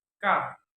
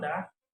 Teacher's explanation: the learners produce sound ka while placing their fingers over the voice box. They shouldn't feel the vibration, while the sound da they feel the vibration